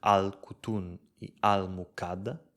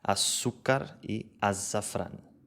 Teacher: when it begins with a solar consonant, the L in the article is lost